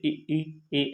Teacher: अगर हम दोस्तों इनको बोले तो हम महसूस करेंगे कि जो जीभ का अगला हिस्सा है वही कंपन करता है, यानी कि वही कार्य करता है। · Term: अग्रस्वर